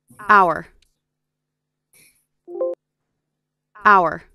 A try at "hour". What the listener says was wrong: Em thấy chữ H nó bị cầm không? Đọc là hour.